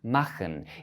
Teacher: It's a voiceless velar fricative.